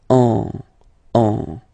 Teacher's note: you will get what we call nasal, so it goes in your nose, and then you get the sound on.